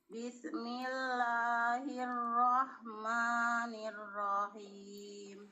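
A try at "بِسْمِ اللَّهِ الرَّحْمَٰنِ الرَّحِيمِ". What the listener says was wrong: Bismi jangan dilepas. Bismillah.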